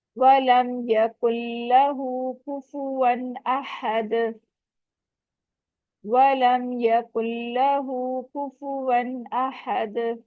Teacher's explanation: वाह अदा करते वक्त आपने होंठों को बिल्कुल गोल करना है, और हा के ऊपर उल्टा पेश है, इसको 2 काउंट स्ट्रेच करेंगे